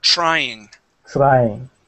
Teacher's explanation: replace the TR with a CHR okay and try TR trying trying there you go that's it